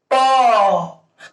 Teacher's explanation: स्पर्श हो रहा। जब तक दोनों ओठ आपस में नहीं सटेंगे तब तक प का उच्चारण होना क्या है? असंभव है। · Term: स्पर्श व्यंजन वर्ण